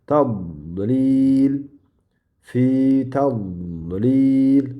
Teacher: Yuqori tishlarga yon tarafi bilan ikki yonini yoyib tegizamiz va tilni uchi ham yuqori kurak tishni orqa qismiga qo'yilib tiraladi, yopiladi. Havo ustidan yo'g'on bo'lib chiqadi va mana shu joyda havo qisiladi va havo qisilganida mana bu tovush hosil bo'ladi. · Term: dod